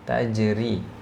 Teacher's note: di sini huruf ra-nya tipis ya. Nah, karena dia berharakat kasrah, tajri ya, bukan tajri tapi ri.